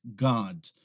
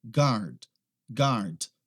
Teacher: você tiver inglês britânico você não vai pronunciar aquele r